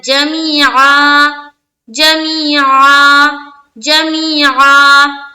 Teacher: एकदम हलक से आइन निकालना है